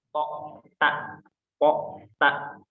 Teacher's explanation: po dan ta ini makhrajnya sama. Sama-sama di dekat ujung gigi seri atas.